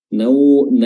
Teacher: naumakum huruf waw di sini sukun dan dia memiliki sifat lin, ya, sifat yang lunak, lentur dan mudah dilafalkan dan diucapkan. Nau bukan numakum, tapi na dulu tak fathah, nau.